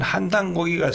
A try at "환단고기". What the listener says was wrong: 한이 아니고 환 아니에요? 환단고기.